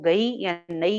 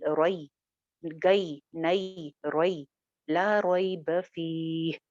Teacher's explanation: उसको मजहूल नहीं पढ़ना, गए या नए ऐसे नहीं पढ़ना